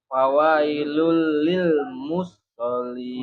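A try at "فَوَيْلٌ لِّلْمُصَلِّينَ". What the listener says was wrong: Musnya tidak ada tasdid. Musallin. Fawailul lil Tidak mus, Pak. Tidak mus tapi musol. Musallin. tidak mus tapi musallin. musol. Karena di sini kan S-nya 1 ya, makanya bacanya langsung ke musol. Jadi ini bukan sin tapi sod, makanya kalau dilatinkan sod itu SHO. Ya, musallin, bukan musholin tapi musallin.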